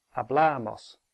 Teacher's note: so the stress is on the penultimate one